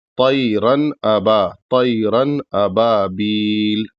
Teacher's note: اس تنوین کو پورا پڑھیں گے اور ناک میں آواز نہیں لے جائیں گے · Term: غنہ نہیں ہوگا